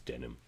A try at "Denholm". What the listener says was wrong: It's like Denholm. Like the H is really pronounced as like Denholm.